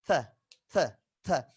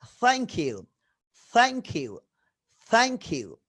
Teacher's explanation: জিভটা একটু হালকা দাঁতের মাঝখানে আসে, থ, থ, থ, এবং ফেসটা হয় স্মাইলিং ফেস, থ, থ্যাংক ইউ, থ্যাংক ইউ, থ্যাংক ইউ, থ্যাংক ইউ, থ্যাংক ইউ, right, okay. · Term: থিটা